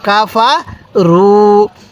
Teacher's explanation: এখানে কিন্তু ফায়ের মধ্যেও টান নাই, কাফের মধ্যেও টান নাই, রয়ের মধ্যে টান।